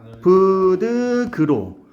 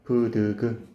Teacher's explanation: 근데 브드그의 소리는 좀 잡히지 않니? 파열음이고 평음으로. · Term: 평파열음화